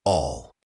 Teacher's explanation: the L sound in all is often a dark L where your tongue is lower in your mouth.